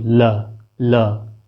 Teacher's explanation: दोनों तरफ से जो जीभ की छिद्र बन रहे हैं उससे वायु निकल रही बाहर की ओर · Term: पार्श्विक व्यंजन